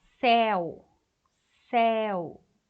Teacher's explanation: O U quase some. Você tem duas vogais, ó. E o E, ele é aberto. Veja que a língua ficou lá embaixo. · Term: ditongo